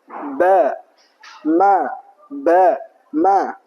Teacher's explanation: huruf ba dan mim itu merapatkan kedua bibir.